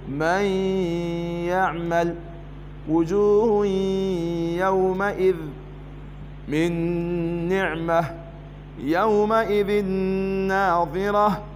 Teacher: نون ساكنه حكم الادغام بغنه لذكر الياء بعدها